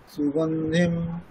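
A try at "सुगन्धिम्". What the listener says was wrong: এই যে এখানটা ভুল হয়ে গেল, সুগন্ধিম শেষেই যখন দেখবেন হলন্ত বর্ণ আছে, হলন্ত বর্ণটাকে অকারান্তের মতন একটু উচ্চারণ করতে হবে, বোঝা গেল?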